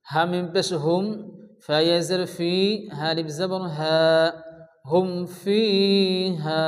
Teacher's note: ইজহারে শাফাবি হয়, বিনা গুণা তাড়াতাড়ি পড়তে হবে।